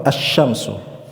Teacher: saat huruf lam itu bertemu dengan huruf 14 tadi, huruf-huruf syamsiyah, suara lam menghilang, melebur seutuhnya ke dalam huruf setelahnya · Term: lam syamsiyah